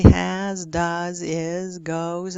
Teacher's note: it's nice to get those right with the nice weak voiced s